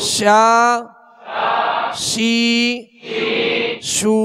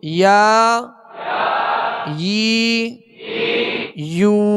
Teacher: یعنی درمیانے زبان درمیانے تالو سے جیم شین یا یہ تینوں حروف ادا ہوتے ہیں۔ اگر ان کا اہتمام نہ کیا جائے، صحیح مشق نہ کی جائے تو جیم کی آواز یا بن جاتی ہے، یا کی آواز جا بن جاتی ہے۔